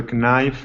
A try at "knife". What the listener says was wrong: Not knife, but knife. The K is silent.